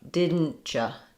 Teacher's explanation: If I'm saying didn't you, I'm either going to use a stopped T and a y sound, or you might have also remembered in the beginning, I said, didn't ya. So sometimes that T and that y sound move into more of a ch sound